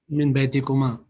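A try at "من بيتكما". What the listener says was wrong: Min baytikuma. Well done.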